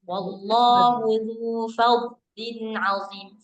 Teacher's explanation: Fad ditahan, jangan dikol-kolahin.